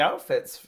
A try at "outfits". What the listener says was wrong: It sounded like you said a yowtfit.